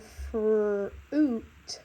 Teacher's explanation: o instead of U so you heard fot which means that it doesn't quite say its name it actually says oo